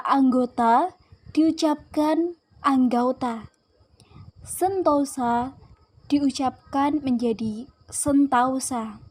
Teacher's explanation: Perubahan ini terjadi pada bunyi vokal tunggal O ke vokal rangkap AU. Tetapi tetap dalam pengucapan satu bunyi puncak. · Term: Diftongisasi